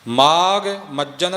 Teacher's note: ਮਜਨ ਪਾਠ ਜਿੱਥੇ ਵੀ ਆਵੇਗਾ ਮਮੇ ਤੇ ਥੋੜਾ ਵਜਨ ਦੇ ਕੇ ਬੋਲਣਾ ਮਜਨ ਪੋਲਾ ਨਹੀਂ ਕਰਨਾ